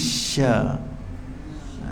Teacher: sya itu hemburkan angin di celah-celah gigi